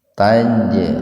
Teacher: Taj kolkolah sugro, ada huruf kolkolah yaitu jim mati di tengah-tengah kata